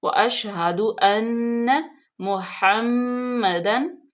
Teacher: नून जो है वो मुशद्दद है और इस पे गुन्ना करेंगे, थोड़ी देर रुकेंगे · मीम मुशद्दद, नून मुशद्दद और मीम मुशद्दद। जब ये आ जाए तो इन पे गुन्ना करते हैं, थोड़ी देर रुकते हैं